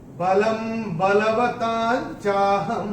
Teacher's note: पहले चरण में ल के ऊपर अनुस्वार जो दिख रहा है हमारी किताब में, उसके बाद का अक्षर है ब, और अनुस्वार के बाद जब ब आएगा तो अनुस्वार का उच्चारण होगा म।